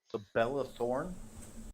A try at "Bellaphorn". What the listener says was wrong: Bellaphorn, not thorn, forn. Fornicate, yeah, not fornicate. Bellaphorn.